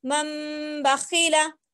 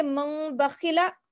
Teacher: غنہ بھی کرنا ہے اور اخفاء بھی کرنا ہے، یعنی کہ آواز روکنا بھی ہے اور چھپانا بھی ہے